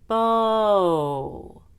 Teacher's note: At the end of bow, my lips are even closer together, like they would be for the long U. Bow. That's how we will create intonation when we want to stress that word.